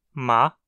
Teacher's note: o véu palatino tá baixado permitindo que o ar passe da garganta para o nariz e saia do corpo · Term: consoantes nasais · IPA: [m]